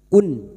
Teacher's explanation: Nun sukun atau tanwin yang bertemu dengan 6 huruf ini, hamzah, ha, ha, kha, ain, ghain. Maka bunyi nun sukun dibaca jelas tanpa mendengung.